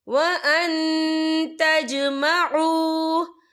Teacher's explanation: یہ دیکھیں وان، یہاں نون ساکن ہے، نون ساکن کے بعد جو ہے تا آ رہا ہے اور تا جو ہے اکفا کا ورڈ ہے، تو ہم یہاں اکفا کریں گے، نون ساکن کی آواز کو ناک میں چھپائیں گے